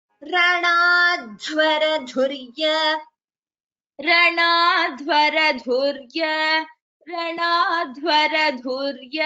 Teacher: Here Ranadhvara, dha is Mahaprana.